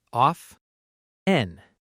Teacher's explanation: Some learners pronounce the t clearly, often but a lot of native speakers say often with a silent t.